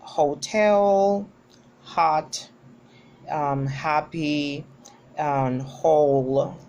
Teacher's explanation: We have examples like hotel, hot, happy, whole, and it is voiced. Its manner of articulation is fricative, and its place of articulation is glottal. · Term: h sound